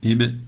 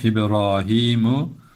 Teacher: ib vurup çekiyoruz dudaklarımızı birbirine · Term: galgale